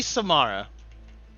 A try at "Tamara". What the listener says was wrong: Mara with a T.